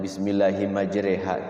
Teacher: jadi bacanya diekan fathah tidak kasr juga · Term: imalah